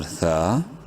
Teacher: ثا الف زبر ثا، الف مدہ ہے، ثا کو بھی ایک الف کے برابر لمبا